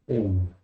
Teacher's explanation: El sonido es E larga, o sea, tiene doble el valor de epsilon. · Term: eta